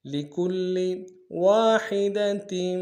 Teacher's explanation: لِكُلِّ میں کاف کو لام کے ساتھ ملانا ہے، لام کے اوپر تشدید زور دیں گے